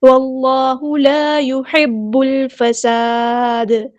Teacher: اللہ کا لام ہیوی ادا کرنا ہے، موچا پڑھنا ہے